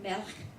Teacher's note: the word melech, which appears in Hebrew blessing phrase above, is pronounced with the accent on the first syllable, not the last. Although most words in Sephardic Hebrew are stressed on the last syllable, words that end with the vowel pattern and all of the gray squares are just symbolizing Hebrew letters.